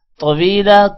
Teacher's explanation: طویلا طا موٹا ہوگا، واو کے بعد یا ہے تھوڑا سا لمبا کریں گے